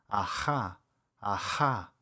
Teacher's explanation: This can be a little tricky at first because it's not a sound that we use in the English language. It's made actually by constricting the airflow in the back of your throat. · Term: rough h sound